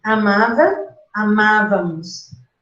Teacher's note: você deslocou o acento de Vá para Má